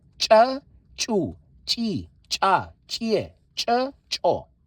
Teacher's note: Hear that pressure? The burst. It's a burst. That's why they call it plosive